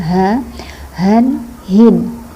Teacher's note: Ini huruf ha. Ini makhrajnya jangan lupa di dada.